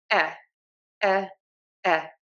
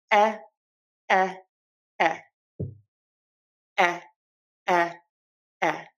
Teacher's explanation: My lips are pulled back. Okay. So my lips are not puckered. They are not forward. They are pulled back. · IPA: /ɛ/